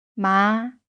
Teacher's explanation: Rising, a word for hemp